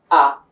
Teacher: হামজার মাখরাজ ছিল হলকের শুরু, তো হামজা জবর আ, এইভাবে পড়তে পারি।